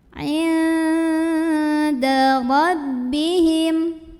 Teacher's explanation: Kemudian di sini bertemu dengan ikhfa aqrab karena ada nun sukun yang bertemu dengan huruf dal. Maka cara membaca nun sukunnya adalah samar-samar mau bilang dal sambil dengung. Nah, karena huruf dal ini secara tempat keluarnya huruf atau secara makhraj masih dekat dengan nun, maka ini enggak terlalu dengung ya, jadi masih samar.